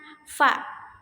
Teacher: bibir bawah mengikuti gigi atas dan dilafalkan fa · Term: labiodental, bunyi labiodental